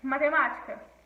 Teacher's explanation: Proparoxítona, quando a antepenúltima é mais forte.